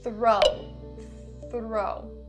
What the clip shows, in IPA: θrəʊ